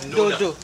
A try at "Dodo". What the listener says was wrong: Yo, just putting too much emphasis. Just say it like an everyday word. Dodo.